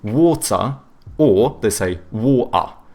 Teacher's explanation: they do a schwa instead of pronouncing the R